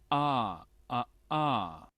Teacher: es un sonido gutural, aparte que es un sonido gutural, es un sonido muy suave y casi imperceptible